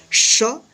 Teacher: तालव्य श इसका तालु और जीभ की मदद से इसका उच्चारण होता है